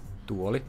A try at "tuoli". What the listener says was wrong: Tuoli. Tuoli. Less of a T sound, more sounds like a D.